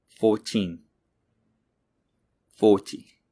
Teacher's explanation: for numbers in the teens the second syllable the teen is stressed for multiples of 10 the first syllable is stressed